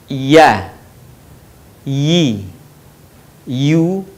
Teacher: huruf ya keluar dari tengah lisan disentuhkan dengan langit-langit